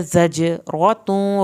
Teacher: جیم پہ آپ کا قلقلہ ہوگا